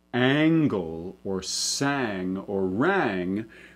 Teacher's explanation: the nasalization tends to flatten that vowel even more, that raises it up. In fact, probably raises it so much that it's more accurate to represent it as an E sound, the dress sound lowered. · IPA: æŋ